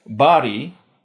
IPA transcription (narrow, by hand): bɑː.ɾiː